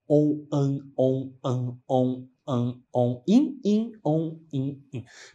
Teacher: sons que se repetem om ã om que também são vogais por mais que eu tenho o n ali o som é o som de uma vogal